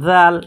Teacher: দাল কোত্থেকে উচ্চারণ হয়েছে জিহ্বার আগা সামনের দুই দাঁতের আগার সাথে উচ্চারণ হয়েছে